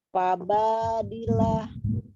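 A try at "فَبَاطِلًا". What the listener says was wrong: Ti. To ya hurufnya tila, bukan dila. Fabatila.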